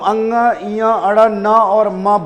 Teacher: स्पर्श व्यंजन के हर वर्ग का यह जो पांचवा वर्ण है यह नासिका से बोला जाता है